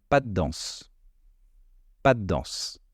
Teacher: en fait on allonge le D mais le de reste très subtile on l'entend mais pas trop c'est parce qu'il est suivi d'un autre d par la suite · on a l'impression que le de est complètement supprimé